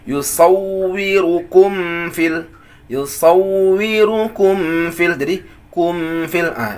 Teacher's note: itu gunnah namanya, tapi naqisah, sedikit saja, sedikit sekali.